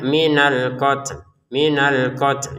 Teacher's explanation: Untuk kata alqat kita harus keluarin nafas dikit ya. Kemudian yang di depannya kan lam ini ya kita baca sukun ya karena kita berhenti ya terbacanya suun. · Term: keluarin nafas sedikit